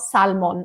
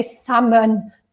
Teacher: it's salmon not Salman ok salmon we don't pronounce the L